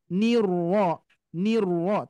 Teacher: huruf ro ini mempunyai sifat takrir ya takrirnya tetap harus terdengar